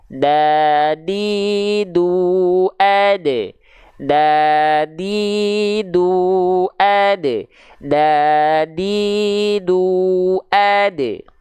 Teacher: Kita punya gigi seri atas atau gigi kelinci sering kita sebut. Di bagian pangkalnya, di bagian gusi tempat tumbuhnya, kita sentuhkan pakai ujung lidah kita. · Ujung lidahnya kita sentuhkan dengan pangkal gigi seri atas. · huruf dal itu, perhatikan, dia dilafalkan dari ujung lidah kita. Kita punya gigi seri atas atau gigi kelinci sering kita sebut.